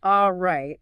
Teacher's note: the phrase all right, when it's used to start a new thought, gets so compressed it sounds like right? Almost one syllable.